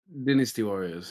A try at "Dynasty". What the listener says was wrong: That doesn't make any sense. That's not what it's called. It's not what it's called at all. It's Dynasty. Dynasty. Where do you get the din? Din would be D-I-N. Not din. Dine. Dynasty.